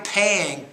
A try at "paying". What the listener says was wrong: pronounce the p with more air